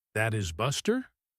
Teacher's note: if they reply, That is Buster? with a rising voice, they are just as confused as you are.